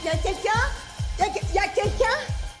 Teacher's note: One word we often drop when speaking is il, as in il y a.